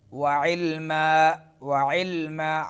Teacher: आइन दरमियान हलक से